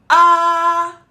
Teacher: My mouth is open big and my tongue is at its lowest.